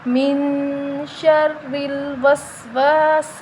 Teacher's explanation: سین سیٹی والا حروف ہے تو ہم اس کی آواز نکال کے پڑھیں گے، سا نہیں کریں گے۔